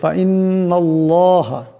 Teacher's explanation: নুনের উপর জবর আছে তাই আল্লাহর লামকে মোটা আওয়াজে পড়তে হবে